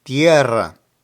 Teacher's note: Tierra also emphasizes the E, but you need to trill the R.